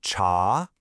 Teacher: The character is pronounced cha. It's a rising second tone, so it goes up.